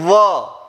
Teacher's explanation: ऊपर के दांत नीचे के होठ पर या नीचे का होठ ऊपर के दांतों को कहीं ना कहीं स्पर्श करता हुआ दिखाई दे रहा है